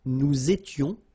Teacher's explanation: Il était, elle était, final T not pronounced. Here, little liaison and final S not pronounced